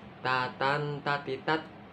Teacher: Ta ini bukan kolkolah loh ya. Kalau bukan kolkolah enggak boleh dipantulkan.